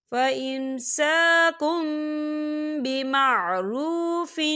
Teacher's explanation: الطلاق مرتان فإمساكم بمعروف، فإمساكم کاف کے پر تنوین ہے اور تنوین کے بعد با آ رہا ہے، تو یہاں پر اقلاب ہوگا یعنی تبدیلی ہوگی۔ ہم کاف کو میم کے ساتھ ملا کر پڑھیں گے اور یہاں پر غنہ بھی ہوگا۔